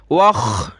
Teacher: खा को गले से निकालें बलगम की तरह ज़ोर लगाकर